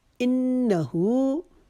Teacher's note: انہ کو ہم نے نون کے اوپر تشدید کی وجہ سے ایک الف کے جتنا غنہ کرنا ہے اور ہو کو الٹے پیش کی وجہ سے ایک الف کے جتنا کھینچنا ہے. انہو، اس کو انہو نہیں پڑھیں گے.